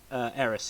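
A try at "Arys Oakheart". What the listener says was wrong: Aris Oakheart. Aris. Aris, because there's no no AE, it's just AR.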